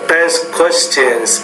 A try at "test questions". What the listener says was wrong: Okay, the one here is the word test, believe it or not. You didn't really pronounce that T with enough air, so test questions. Test questions. You said it more like desk questions, but test questions.